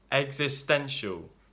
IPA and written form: ɛɡzɪˈstɛnʃ(ə)l (existential)